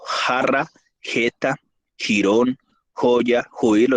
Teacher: El fonema significativo velar sordo